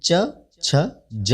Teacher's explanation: जब हम च, छ, ज बोलते हैं तो जीभ जिस स्थान पर टकराती है उसे ही तालु कहा जाता है। इसी तरह इन वर्णों का उच्चारण भी तालु में जीभ छुआकर करना चाहिए।